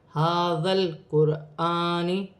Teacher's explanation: را ساکن سے پہلے پیش ہے تو را موٹی بھی پڑھی جائے گی اور ملا کر پڑھی جائے گی